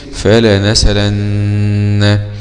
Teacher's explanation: ولحمزة وقفا نقل حركة الهمزة إلى السين